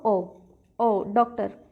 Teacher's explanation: मतलब पूरा आ भी नहीं ना पूरा ओ बीच वाली साउंड जो होती है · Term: आगत ध्वनि